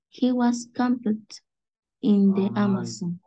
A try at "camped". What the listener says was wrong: No se pronuncia la ED. Al final el sonido de él.